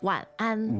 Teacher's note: third tone, first tone, right?